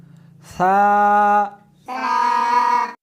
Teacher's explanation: اس حرف کو زبان کو دونوں دانتوں کے درمیان رکھ کر پڑھیں گے۔